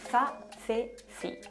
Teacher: De España es muy reconocible el sonido interdental de za, ce, ci